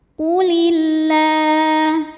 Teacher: Kemudian alif lamnya dinamakan dengan alif lam syamsiyah. Karena alif lam menghadapi huruf syamsiyah yaitu lam, maka alif lam tidak kita baca atau diidghamkan.